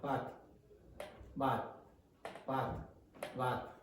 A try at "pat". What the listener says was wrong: Now that's not clear enough for me. Okay? So is not aspirating this enough. So you must You have to go like this. Go like this. Pat.